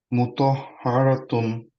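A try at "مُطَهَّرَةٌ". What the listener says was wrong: হারাতুন, র হারাতুন, র এর সময় একটু রাউন্ড হয়ে গেছে। গুড হ্যাঁ এখন এখন আমরা হচ্ছে হারাতুন হা র হা হালকা র হেভি আবার টু হালকা রাইট হারাতুন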